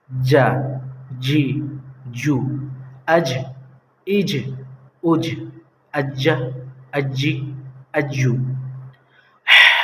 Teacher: زبان کا بیچ کا حصہ، اور اسی کے سامنے اوپر کے تالوں سے ٹچ ہوگا۔ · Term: جیم